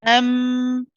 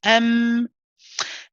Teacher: the mouse is closed so what happens as a result is the sound of your voice then has to pass through the nasal cavity